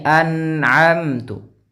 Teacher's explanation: Dia tidak boleh mantul suara nun. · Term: izhar